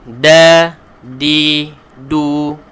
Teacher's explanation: kita letakkan lidah, hujung lidah kita ni di belakang gigi atas. Belakang gigi depan atas. Ya. Da, dia bunyinya akan lebih lembut. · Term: huruf dal